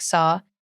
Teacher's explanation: when you say words that end in all like saw you add a little kind of r sound to it